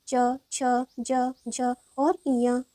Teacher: च वर्ग के सभी व्यंजन को तालव्य के माध्यम से बोले जाते हैं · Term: तालव्य व्यंजन